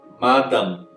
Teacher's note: e eu acabo com o som com a boca fechada. Eu não vou abrir, porque se eu abrir eu vou transformar num N.